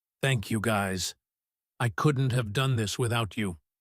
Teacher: It is sincere and slow. She stresses you and without you. The emotion is carried by the length of the words.